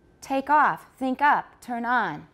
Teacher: the second one sounds more stressed than the first part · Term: tonic stress